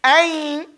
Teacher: So when you say ayn, you hear the air that you're holding in your nose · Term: ghunna